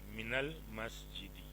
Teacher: من کے ساتھ اگر کسی ال والے لفظ کو ملائیں گے تو من کے نون پہ زبر دے کے پھر پڑھا جائے گا